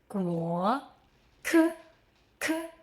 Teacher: Same position as g, but with a strong puff of air.